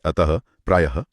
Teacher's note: विसर्ग का उच्चारण ह की तरह होता है और इसका प्रयोग तत्सम शब्दों में होता है।